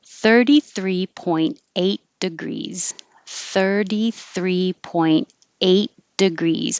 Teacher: very specific degree 33.8 degrees 33.8 degrees i'm not pronouncing the i don't release my t